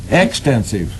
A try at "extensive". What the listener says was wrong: Yeah, not expensive. Extensive. With a T. Put a T in it.